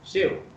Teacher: शिव तालव्य श, तालु से उसका उच्चारण होना चाहिए